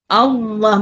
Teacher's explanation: Nak ceritanya ada perbezaan tebal dengan nipis. Bila tebal pangkal lidah menaik. Ah gitu. Maknanya lidah tu tegang. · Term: lam tebal